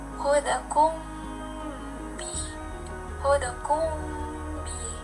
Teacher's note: Ikhfa syafawi jika mim sukun bertemu dengan ba, maka dibaca samar disertai dengung